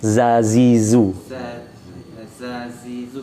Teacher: Zainya itu lebih bergetar gitu ya Pak ya. Jadi bukan desis ya.